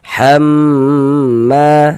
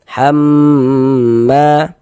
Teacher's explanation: Kita ghunahkan kira-kira sepanjang dua harakat. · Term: ghunah musyaddadah